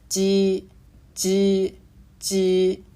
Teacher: 萧山话鸡声母的发音同普通话的鸡，但是发音略紧